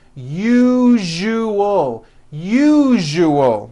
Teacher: that second syllable jus the one with the underline needs to be voiced put your hand on your throat and feel for the vibration